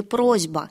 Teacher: есть озвончение глухого согласного перед другим звонким согласным